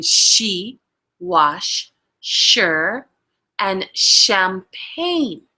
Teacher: The sound is squeezed through the gap, making a sh sound. The voiceless sound can be found in she, wash, sure, and champagne.